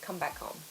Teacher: it's quite common to make the h sound quite soft like come back home.